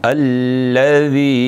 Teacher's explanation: इसमें कोई भी सीटी नहीं है, क्योंकि ये ज़ाल है, क्योंकि ये इसमें सीटी नहीं देनी।